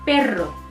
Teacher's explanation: So it's creating a kind of vibration. You are hitting your tongue onto your palate and it's intermittently hitting it and it's creating a vibration.